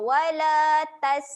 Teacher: Tas huruf sin ketika mati sifatnya keluar angin.